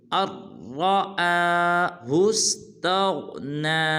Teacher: نون کا را کے اندر ادغام ہو رہا ہے، لہٰذا ہم حمزہ کو را کے ساتھ ملائیں گے اور را کو پر ادا کریں گے